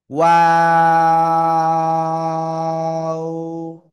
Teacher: তো দেখেন, এই যে ওয়াও অক্ষরটা এটা উচ্চারণ হয় এই যে দুই ঠোঁট, দুই ঠোঁট গোল করিয়া। শুরুতেও গোল হবে, মাঝখানে দুই দিকে প্রসারিত হবে, আবার শেষে এসে গোল হবে।